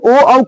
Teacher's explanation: उदतो कंठ ओष्ठम उदतो कंठ ओष्ठम ओ और औ दोनों का उच्चारण स्थान क्या होगा क्या होगा कंठ और ओष्ठ दोनों